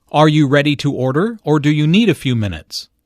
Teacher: The word or signals a choice here. Notice the rising intonation on order and the falling intonation on minutes.